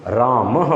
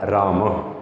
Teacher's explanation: जहाँ पर बेटा विसर्ग होता है ना, वहाँ पर ह की साउंड आती है।